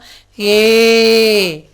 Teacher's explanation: ஹிந்தியில் குறில் ஏ கிடையாது. அதனால் நெடில் ஏ தான்.